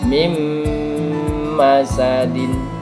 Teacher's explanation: dibaca menjadi mim masadin, mendengung ditahan 2 harokat. Mim itu bacaan idgham biguna.